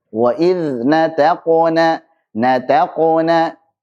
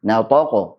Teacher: Na, ta tipis semuanya, taqu. Ta tipis, qaf tebal, na tipis lagi.